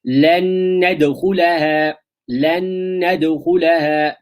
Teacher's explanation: They merge, and there is a nasalization for two harakas. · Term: idgham with ghunnah